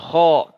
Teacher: Kho dari atas tenggorokan dia mengalir suara mengalir nafas